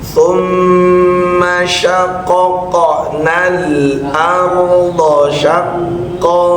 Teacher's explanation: Summa Jangan dijeda, jangan terlalu lama maknya. Boleh gunanya ditahan tapi bunyi a-nya summa, a nggak boleh dipanjangkan.